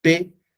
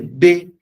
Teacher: la P es sorda y la B es sonora. Ese es el rasgo diferencial.